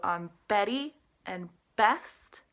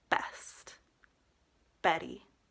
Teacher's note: on Betty and best, you want your lips to come together.